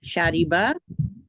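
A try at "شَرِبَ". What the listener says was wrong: शारिबा, बा आगे अलिफ लगा रहे हैं हम। शारिबा, शारिबा, शारिबा, शारिबा, बस शारिबा, शारिबा।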